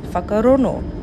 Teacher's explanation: Tūhui speakers change the ng sound into an N sound, so whakarongo becomes whakarono.